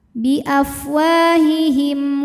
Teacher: izhar syafawi karena mim sukun menghadapi huruf selain mim dan ba maka mim dibaca jelas